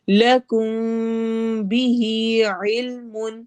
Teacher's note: لکم میں میم ساکن کے بعد با آ رہا ہے اس لیے ہم میم کی آواز کو چھپا کے پڑھیں گے